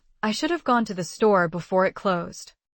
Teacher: The unstressed words like should have and to the are weak forms, so they're easy to miss.